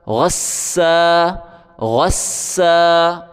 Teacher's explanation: اگلا لفظ دیکھیں، غین کو سین کے ساتھ ملائیں، سختی کے ساتھ پڑھیں، سیٹی کی آواز بھی نکالیں سین کے اوپر